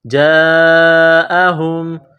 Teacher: یہاں مد ہے، اس کو لمبی مد کہتے ہیں، 4 الف کے لمٹ میں کھینچنا ہے